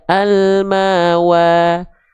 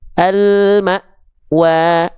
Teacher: maanya terhentak karena berjumpa dengan Hamzah sukun punya sifat syiddah